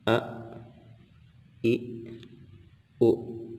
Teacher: Hamzah yang pertama berharokat kemudian terhenti dengan Hamzah Ya Sukun karena Hamzah itu makhrojnya ada di pangkal tenggorokan